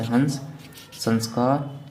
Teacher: पूरा उच्चारण करते समय पूर्ण वायु कहाँ से निकलती है, नाक से निकलती है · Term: अनुस्वार